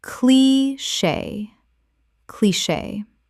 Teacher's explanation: Correct pronunciation, cliché. 2 syllables with the CH making a SH sound, from French.